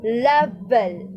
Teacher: It is voiced since when we pronounce the letter L, the sound of the letter L, level. The place of articulation is what we call the alveolars. So alveolars is the place of articulation of the letter L, and the manner of articulation of letter L is what we call the liquid.